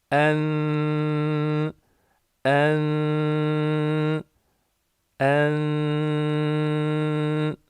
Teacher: diliniz üst dişlerinizin iç kısmına değmek üzereyken boşluk olacak şekilde sesini okumaya çalışmamız gerekiyor şimdi okuyalım en en en Evet bu şekilde nun harfini gizliyoruz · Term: ihfa